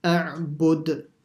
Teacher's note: you stop at a dal, you have to make a qalqala